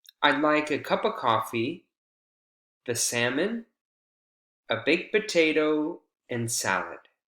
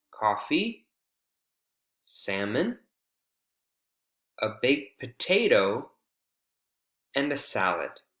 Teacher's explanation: with items in a series when we have a list of things the intonation Rises on each initial item except for the last and on that last item the intonation Falls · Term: Final intonation